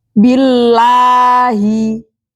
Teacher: lafaz Allah dibaca tarqiq atau tipis karena didahului dengan huruf berharakat kasrah